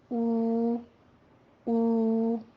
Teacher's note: हमजा बड़ी जबर अलिफ आ, फिर वाओ साकिन हो और उससे पहले जम्मा हो तो वाओ मद्दा। इसको भी हम दोनों होंठों को गोल करके 2 काउंट करेंगे। 2 हरकतों बराबर हमने इसको लंबा खींचना है।